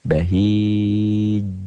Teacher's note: Qalqalah kubro dan mad aridlis sukun tuh. Jimnya kan dimatikan dalam bunyi.